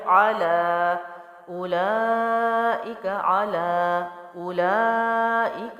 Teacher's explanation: عین حلق سے ہے، باریک ہے۔ پڑی حرکت جلدی چھوڑا، لام کھڑا زبر ہے، اور ہم نے پڑھا تھا کھڑا زبر کے ساتھ کہیں واو اور یا اضافی ہوتا ہے، پڑھا نہیں جاتا، تو عین جلدی چھوڑا، لام کھڑا زبر، ایک الف لمبا کیا۔